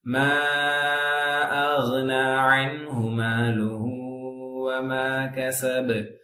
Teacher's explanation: புரிஞ்சுதா மா அக்னா மா அக்னா அடுத்து அலிஃப் மது பிறகு ஹம்சா வரனால மது முன்ஃபஸில் 5 ஹரக்கா 4 ஹரக்கா நீட்ட வேண்டும்